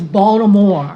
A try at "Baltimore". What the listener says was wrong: No T in there. throw that T out and you roll it. It's called Baltimore.